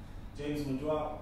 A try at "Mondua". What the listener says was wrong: It's Monda, sir, the youth silent.